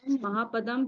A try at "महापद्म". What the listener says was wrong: पदम नहीं है, पद्म। आधा द है। पद्म, महापद्म, तिगिंच, केसरी, महापुंडरीक और पुंडरीक।